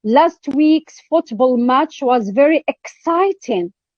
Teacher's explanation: emphatic stress is on the word exciting